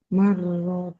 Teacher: rnya dibaca dobel ada tasdidnya mar ditekan dan ditahan